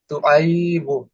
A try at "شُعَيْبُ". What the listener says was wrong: বাই এত টান হবে না। শুআইবু,